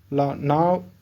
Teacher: பாருங்க ல நா மேல் பள்ளி பற்களின் அடியை தொடுவதால் லகரம் தோன்றும் சோ பற்களின் அடியை தொடுவதால் இந்த லகரம் தோன்றும் இது வா போல இருப்பதால் வகர லகரம் என்றும் அழைக்கப்படுகிறது சோ இந்த லா